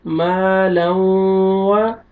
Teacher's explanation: الف لام سے پہلے ہمیشہ زبر آئے گا، آپ نے زبر لگانا ہے، اور یہ الف مد ہے، الف سے پہلے زبر ہے، آپ نے میم کو کھینچنا ہے